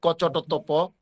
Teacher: প্রথম পাঁচটা বর্ণ বা পাঁচটা ধ্বনি কম বাতাস দিয়ে উচ্চারণ করতে হয়। বাতাসের আরেক নাম যেহেতু প্রাণ, তাহলে এটাকে আমরা বলতে পারি অল্প প্রাণ।